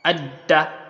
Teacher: dal's makhraj is above, it is at the tip of the tongue, close to what? The upper part of the mouth.